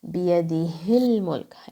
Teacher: Ha is a throat letter. Ha is going to come from the bottom of your throat like a deep sigh.